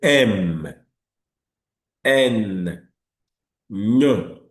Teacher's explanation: the air comes out from the nose while the air is blocked at the mouth. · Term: nasal consonants